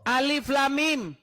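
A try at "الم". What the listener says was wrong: Salah. Orang baca itu pakai tajwid. Alif tuh enggak panjang. Coba baca masa alif kayak gitu.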